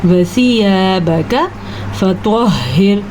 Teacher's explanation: را کو ہم باریک پڑھیں گے کیونکہ را ساکن سے پہلے زیر ہے۔